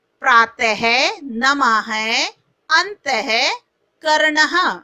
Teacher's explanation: विसर्ग का उच्चारण ह के समान होता है